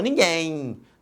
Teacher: no final, este M representa um I, aqui representado foneticamente pela letra Y. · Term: ditongo fonético